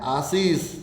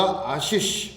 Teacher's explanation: आशीष में पहला से आएगा, कौन सा आएगा, तालव्य, फिर आएगा मूर्धन्य से अंत में। यहाँ पर दंते से आएगा ही नहीं, ये ध्यान रहे।